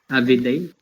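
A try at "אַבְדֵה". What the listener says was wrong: Okay, and let's cut this one right there. Av, because this is a short vowel. Av, de. Avde. What we said here is that this silent shba follows a short vowel, and that the beged kefet letter becomes hard.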